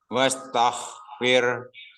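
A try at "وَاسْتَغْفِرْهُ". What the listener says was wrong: Bukan wastoh, tapi tag. Pakai G.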